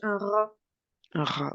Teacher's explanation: quand tu dis un rat ça vient vraiment du fond de la gorge